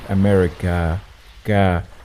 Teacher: America, you know that the first one with hamza, that's the a sound, and the last one, it's a long vowel, so no hamza